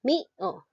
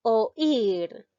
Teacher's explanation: la vocal que suena más es la i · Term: hiato acentual